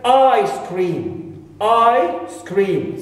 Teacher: so i here is longer longer and the stress is here is on the second word not on the first one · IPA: / a ɪ ˈskrɪːm /